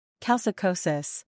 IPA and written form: kælt͡ʃɪkəsəs (Calcicosis)